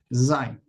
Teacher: no debe sonar como una S, sino como una Z, pero vibrante. Hay una cantidad de palabras en el hebreo que comienza con esta consonante y a la hora de pronunciar no debe confundirse como si fuera la consonante samej.